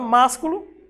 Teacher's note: Ela é uma proparoxítona, porque o mas é a sílaba mais forte.